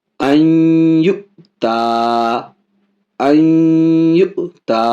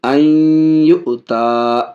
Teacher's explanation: نون ساکن کے بعد یومن میں سے یا ہے، ادغام بھی کر رہے ہیں، ناک میں آواز بھی جا رہی ہے غنہ کے ساتھ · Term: ادغام مع الغنہ